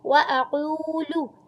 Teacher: چھوٹا پڑھیں گے، حمزہ کی زبر کو چھوٹا پڑھیں گے اور قاف کو تالو سے ادا کریں گے، حلق کے شروع سے پہلے جو تالو والا حصہ ہوتا ہے ساتھ ہی حلق سٹارٹ ہو جاتا ہے، وہاں سے قاف کو ادا کرتے ہیں ، قاف کی پیش کو واو کی مد کے ساتھ ادا